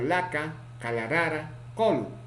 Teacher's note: La, lateral, alveolar, sonoro